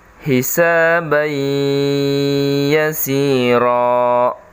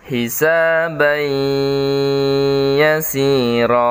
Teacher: Ban ada tanwin bertemu dengan huruf ya, maka tanwinnya hilang, melebur ke dalam huruf ya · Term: idgham bi gunnah